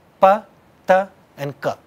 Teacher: What's common between all three of them is they are all stop sounds. Stop sounds mean total closure and then release of air.